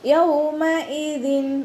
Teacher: വാവ് ഉച്ചരിക്കുമ്പോൾ ചുണ്ടുകൾ ഒന്ന് സർക്കിൾ ചെയ്ത് കൊടുക്കുക. കൽക്കലയുടെ ലെറ്ററില്ലാത്തത് കൊണ്ട് ഹാഫ് സുക്കൂന് കൊടുക്കാൻ ശ്രദ്ധിക്കുക.